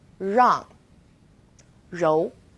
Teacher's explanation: We also have R as in rang or rou. It's quite similar to the R sound in run, but the R is a little softer. So try moving your tongue more to the back of your mouth.